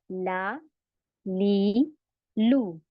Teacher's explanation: लाम का मखारिज हसल लिसान का अगला हिस्सा है